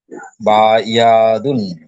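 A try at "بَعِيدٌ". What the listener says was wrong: বা ইয়া নয়, বা ইদুন।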